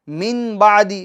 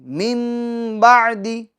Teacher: اب آپ اس کو یوں نہیں پڑھیں گے من بعدی، بلکہ میم، میم، کیوں کہ نون ساکین کے بعد با آیا ہے، بعدی میں با آیا ہے، تو اب نون ساکین کی آواز میم میں بدل جائے گی، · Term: اقلاب